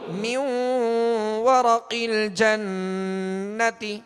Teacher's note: اب نون پر زبر ہے تو آواز اور منہ کھول کر مگر کھینچیں گے نہیں